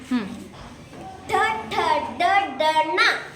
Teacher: ಮೂರ್ಧನ್ಯ ಟ ವರ್ಗದ ಅಕ್ಷರಗಳು ಮೂರ್ಧನ್ಯ ಭಾಗದಲ್ಲಿ ಅಂದರೆ ನಾಲಿಗೆಯನ್ನು ಹಿಂದೆ ಚಾಚಿ ಬಾಯಿಯ ಮೇಲ್ಭಾಗವನ್ನು ಸ್ಪರ್ಶಿಸಿದಾಗ ಉಚ್ಚಾರಗೊಳ್ಳುವುದರಿಂದ ಅವು ಮೂರ್ಧನ್ಯ ಅಕ್ಷರಗಳು